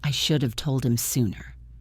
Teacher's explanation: Should have becomes shoulda. Told him becomes told him because we dropped the H in him.